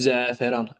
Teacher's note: İlk hecada uzun tələffüz edilməyən sait səhvdir. İlk hecadakı ə saiti uzun tələffüz edilir.